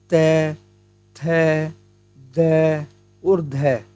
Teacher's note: त वर्ग का उच्चारण जो है हम दंत की सहायता से करते हैं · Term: दंती ध्वनियां